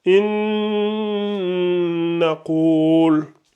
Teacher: lorsque nous avons le noun sakina qui rencontre le noun, on fait ce qu'on appelle le idram avec la runna. Ici, c'est pareil, ça va donner, au lieu de lire inna, ça va donner inna qul, inna qul, in.